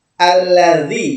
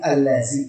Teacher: Kalau zal itu ujung lidah bertemu dengan ujung gigi seri bagian atas.